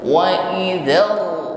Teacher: getaran pada huruf ra di sini tafkhim ya, tebal. Wa idzar dan ra-nya di sini harokatnya dhammah sehingga bibir harus dihimpun ke depan. · harus ada getaran ya di ujung lidah. Yang kedua, getaran pada huruf ra di sini tafkhim ya, tebal. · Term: takrir